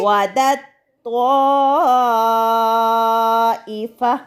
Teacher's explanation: تا اور طوا جو ہیں وہ ایک ہی جگہ سے ادا ہوتے ہیں · وعدت طائفہ، مگر ہم نے ایسا نہیں پڑھنا، ہم نے تا ساکن کو طوا میں مدغم یعنی ملا کر پڑھنا ہے